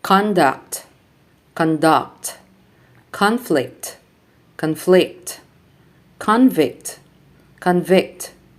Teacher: So the nouns are stressed on the first syllable and the verbs are stressed on the second syllable.